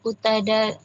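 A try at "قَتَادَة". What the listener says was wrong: Qatada. Ya, di fathah ya.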